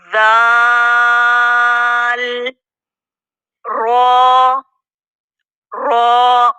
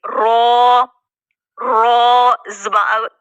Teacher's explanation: र कहां से अदा हो रहा है मसूड़ों से दांतों के मसूड़ों से अदा हो रहा जुबान की पुष्ट नोक से थोड़ा सा जो आगे वाला हिस्सा